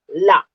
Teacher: और वायु बगल से निकलती है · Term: पार्श्विक